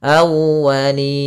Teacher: tekan di wawnya awwa untuk menyempurnakan daripada makhraj wawnya, monyongkan sedikit.